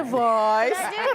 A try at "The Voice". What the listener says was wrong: Oui, oui, c'est bien dit, sauf que le The, tu l'as fait comme les Français. Ce sont les Français qui disent The. The Voice. The Voice.